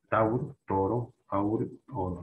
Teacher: La revolución del latín español, aquí vamos a tener, tenemos el monotogación, el diptongo, se convierte en una sola vocal